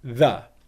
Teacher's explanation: In this scenario, the majority of the time, the word the is going to be pronounced with the th sound, the voiced th sound, and then very simply just a schwa sound, So what you get is the, okay? And can you hear how it's quiet and unstressed? It's a weak English syllable, which is very, very important for your English rhythm, okay?